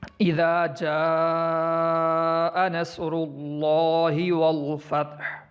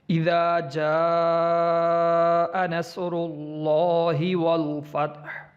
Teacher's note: اس کو ہم 5 الف کی مقدار لمبا کر کے پڑھیں گے اور یہ کافی لمبا کر کے پڑھا جائے گا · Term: مد